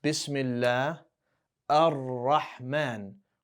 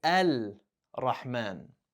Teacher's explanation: when you get an Al in front of a word or in front of specific letters, you'll notice the lam sound is not pronounced. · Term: solar Al